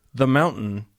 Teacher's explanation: But if you say the mountain, the in the is a schwa.